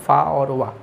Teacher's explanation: तो ओठ और दांत की सहायता से फ बोला जाता है। फ को मुंह बंद करते हैं तो देखो मुख से भी मतलब ओठों के माध्यम से और दंत के माध्यम दांतों के माध्यम से भी बोला जाता है फ और व। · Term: दंत ओष्ठ